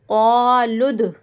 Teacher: دال کی آواز پلٹ کر آئے گی